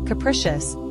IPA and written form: kəˈprɪʃəs (Capricious)